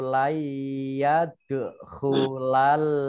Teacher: nun sukun bertemu dengan huruf ya, bacaan idgham bi gunnah, yaitu idgham yang mendengung. Ya ditandai dengan huruf ditandai dengan tasdid.